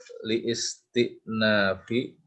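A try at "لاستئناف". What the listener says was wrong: Hamzahnya hamzah wasol. Listinaf langsung.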